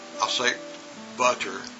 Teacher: it's going to sound like b-u-d-d-e-r when you listen to it the next one is pattern now the real word is pattern